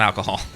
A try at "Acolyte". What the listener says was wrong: There's no L before the C.